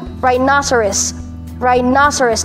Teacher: the stress is on the second syllable and for another strange reason no here becomes na rhinoceros rhinoceros